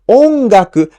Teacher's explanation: has the accent on the first Mora o so we pronounce o at the higher pitch